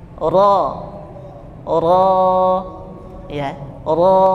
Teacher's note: ro yang fathah bacanya tebal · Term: ro tebal